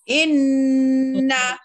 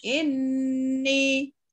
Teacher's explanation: Ditahan suara sabdu itu 2 harakat pada keadaan wasal atau waqaf. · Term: huruf gunnah